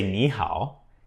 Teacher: So when you say ni hao, the ni is changed to a second tone